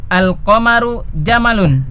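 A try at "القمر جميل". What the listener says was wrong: Jamilun ya, dilihat tulisannya. Jamalun apa jamalun? Jamalun onta. Ya, kalau al-qamaru jamalun bulan itu onta kan tidak mungkin ya.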